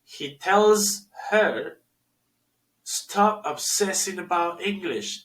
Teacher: Aquí el her suena como un schwa, una pequeña A.